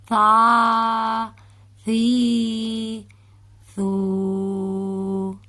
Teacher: یہ دیکھیں آپ کو جو مشکل لفظ ہیں ان کا بتاتی چلوں. سا ہے، سا کو ہم بالکل نرمی سے پڑھیں گے، زبان کو دونوں دانتوں کے درمیان ملا کر